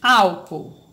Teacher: o hiato quando ocorre o encontro de duas vogais no hiato não tem semivogal Então são duas vogais mas que quando eu faço a separação